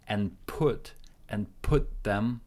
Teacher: We connect N and put. P, again, is an aspirated sound. You breathe out a little bit of air and put them, linking with T and TH, and put them.